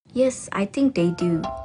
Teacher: She uses a fall rising tone appropriately to indicate that she doesn't really know or is unsure.